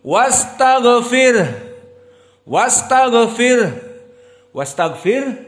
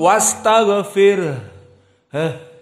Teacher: khilaf karena kita wukufkan pada Jim Afwan pada ha dan intabih di saat kita mensukunkan ha harus ada hams karena dia huruful hams